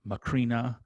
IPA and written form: məˈkɻinə (Corinna)